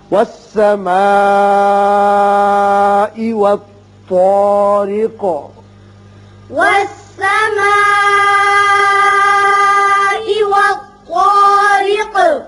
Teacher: والطا پر پڑھیں گے، را باریک ہوگا، یہاں چونکہ آیت ختم ہوتی قاف ساکن ہو جائے گا اور اس کی صفت قلقلہ ادا کریں گے